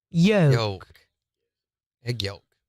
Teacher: They're not saying the L. They're just saying Yeah, yolk.